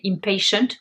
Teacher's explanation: vous remarquez que le premier T se prononce ch